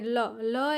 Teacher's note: ફેફસામાંથી બહાર આવતી હવા જીભની બાજુમાંથી પસાર થાય જે ધ્વનિ ઉત્પન્ન થાય તેને પાશ્વિક વ્યંજન કહેવામાં આવે છે ઉદાહરણ